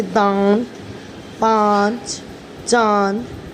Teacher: हवा मुंह के साथ साथ नाक से भी निकलती है तो वह वर्ण अनुनासिक होता है